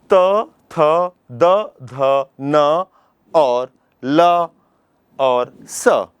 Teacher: तो इस सूत्र में हमने देखा कि ऋतु लसा नाम दंता ल वर्ण त वर्ग त थ द ध न और ल और स इतने वर्णों के उच्चारण जब हम करते हैं तो हमारी जो जी्हा है हमारी जो जीभ है वो दांतों से टकराती है। दांतों को स्पर्श करती है